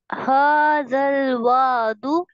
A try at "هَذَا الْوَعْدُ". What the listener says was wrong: وعد نہیں، عین کو حلق کے درمیانی حصے سے ادا کریں.